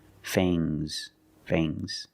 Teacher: And the S is making a zebra sound, Z, but it's soft.